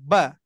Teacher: rasakan di mana tuh bunyinya ba dari dua bibir ya Nah pertemuan bibir atas dan bibir bawah itu makhraj